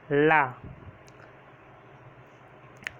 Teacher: जब भी आप ला बोलेंगे तो मुंह के दोनों तरफ से हवा बाहर निकलती है और बीच में हमारी जीभ रहती है, इसीलिए इसको पार्श्विक व्यंजन कहते हैं, ला।